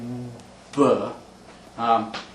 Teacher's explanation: voice stops like b, in which you stop the flow of air, but you vibrate your vocal cords to get b.